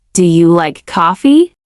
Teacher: If your voice doesn't rise at the end of, Do you like coffee? it might not even sound like a question. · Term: question intonation